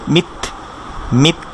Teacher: তখন কিন্তু কলকলা হবে না, তখন কেমন হবে মিথ, মিথ, সাউন্ডটা থেমে যাচ্ছে। আর তার ক্ষেত্রে আমরা একটা জিনিস খেয়াল করি যে তার সাউন্ডটা যখন থামছে হালকা একটা বাতাস বের হচ্ছে, এটাকে আমরা বলে থাকি যে হামস, অর্থাৎ হালকা একটা বাতাস বের, মিথ, মিথ।